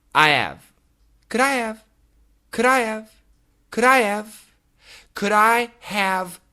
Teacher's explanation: the word have, when it comes in the middle of a sentence, it is very possible to cancel the H sound. So, I have can become I have.